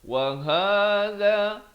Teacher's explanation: wa ha di pangkal kerongkong ha ni, bukan baca waha. Ha itu ha pedas, ini waha simpul ini makhrajnya di pangkal kerongkong.